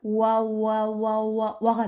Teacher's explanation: 이것은 반모음 오라고 부르는데, 자, 와를 예로 들면, 와는 오와 아가 합쳐진 소리예요. 근데 오와 아를 연속해서 빠르게 이어서 발음하면 와가 되죠. 자, 이렇게 오하고 아하고 합쳐서 변화가 될 때 이 변화된 오라는 부분의 소리를 W로 써서 표시하는데 이것의 이름이 반모음 오우예요.